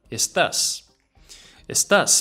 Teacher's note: Put the emphasis on the A.